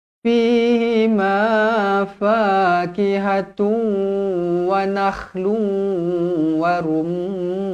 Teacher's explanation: mim yang bertanda sabdu wajibul gunah dengung dua harakat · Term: wajibul gunnah